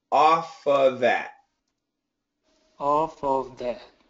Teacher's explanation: when we say it quickly, this V sound can disappear. So we actually say off of that.